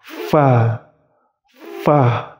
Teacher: Fa. Yaitu posisi gigi seri atas itu menyentuh bibir bawah. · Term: huruf fa